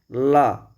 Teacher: और क्या लिखा हुआ है कि जिन व्यंजनों के उच्चरित करते समय जिह्वा का अग्रभाग मसूड़ों को छू जाता है और वायु जिह्वा के दोनों पार्श्वों में निकल जाती है। पार्श्व मतलब पीछे से अगल बगल से निकल जाती है, पार्श्विक व्यंजन कहलाते हैं।